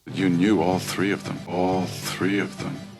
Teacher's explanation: His thought vowel is a bit open a couple of times.